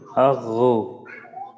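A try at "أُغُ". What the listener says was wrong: মাশাআল্লাহ, আওয়াজ চালু থাকার বিষয়টা খুবই ভালো ছিল, মোটাটা আর একটু বাড়াইতে হবে।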